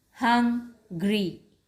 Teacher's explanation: there's a slight pause after hung and then gree comes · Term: syllable